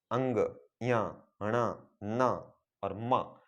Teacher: जब इन पंचम वर्णों का उच्चारण किया जाता है इनकी ध्वनि नाक से निकलती है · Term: नासिकीय व्यंजन